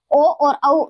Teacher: ओ और औ इनका उच्चारण स्थान पूछा जाता है तो कंठ और ओष्ठ से होता है।